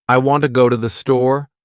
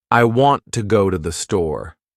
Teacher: The words want, go, and store are stressed. The other words I, to, and the are much faster and softer. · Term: stresstimed language, natural rhythm of English